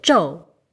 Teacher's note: And if you dropped the aspiration, you get zhou